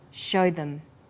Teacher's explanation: show is stressed and them is unstressed, so we say show them.